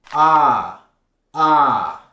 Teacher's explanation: If you want to master American English, you need to master this sound. To make this sound, you have to open your mouth a bit bigger and hold that vowel sound just a little bit longer. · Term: open sound